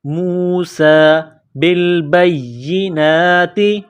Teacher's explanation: سین میں سیٹی کی آواز پیدا کریں گے، سین کے اوپر کڑا زبر ہے، 1 الف کے لمٹ میں کھینچیں گے، موسیٰ بالبینات۔